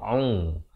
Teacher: Jadi pastikan lafaznya itu hamzah di pangkal kerongkong a. Kemudian ain berbaris dhammah di pertengahan kerongkong